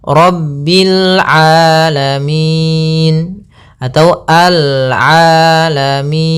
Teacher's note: Mad Arid di sukun yaitu adanya huruf nun yang diwaakafkan menjadi huruf sukun kemudian sebelumnya huruf mad berupa huruf ya maka panjang minya ini